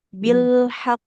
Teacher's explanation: Ini jadinya kalau berhenti di sini jadinya qalqalah akbar ya. Dia lebih kuat pantulannya.